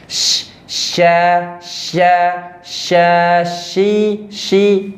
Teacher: Jadi di huruf shin kemarin sudah kita bahas ya di video sebelumnya, itu ada nama sifatnya yakni tafasyi, anginnya menyebar dan itu jelas.